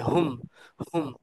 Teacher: এরপর আসছে হুম, হুমটাকে একটু জোরে ধাক্কা দিয়ে বাতাস বের করে পড়তে হবে।